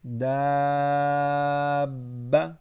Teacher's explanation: با حروف قلقلہ ہے تو اسے ہلائیں گے